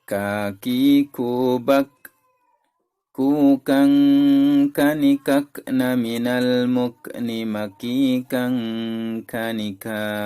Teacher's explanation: kaf itu punya dia hamas, sama seperti sin dan juga sama seperti sa. Dan dia hamasnya itu terdengar juga ketika dia sukun. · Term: huruf kaf